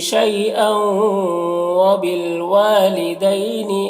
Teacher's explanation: ہم تنوین کو واو سے ملا کر غنہ کے ساتھ میں پڑھیں گے۔ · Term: ادغام ناقص